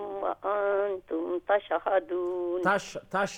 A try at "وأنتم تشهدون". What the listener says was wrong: شین پہ قلقلہ نہیں ہے. تشهدون.